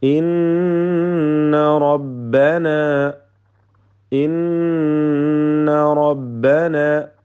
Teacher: ഷദ്ദുള്ള നൂനിനെ മണിക്കണം, റായിനെ തഫ്ഖീം ചെയ്യണം